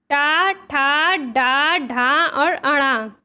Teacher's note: जो टा वर्ग होता है वह मूर्धा से उच्चारित होता है।